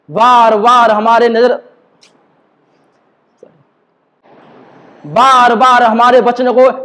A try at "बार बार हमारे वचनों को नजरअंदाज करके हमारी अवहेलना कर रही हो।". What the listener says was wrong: वचनों को क्लियर, बार बार हमारे वचनों को चिपकाओ मत। दो शब्दों को चिपकाओ मत।